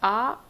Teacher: विवृत स्वर के उच्चारण में मुख द्वार पूरा खुला होता है